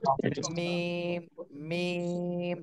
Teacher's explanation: মিম, মিম, শুকনা অংশ থেকে উচ্চারণ হবে। দুই ঠোঁটের শুকনা অংশ থেকে মিম